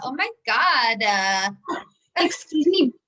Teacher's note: i do love to like get a little vocal fry when i get upset